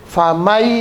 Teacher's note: Kalau iya itu huruf idgham yang bigunnah, berdengung.